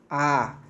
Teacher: उच्चारण करते समय मुंह पूरी तरह खुल जाता है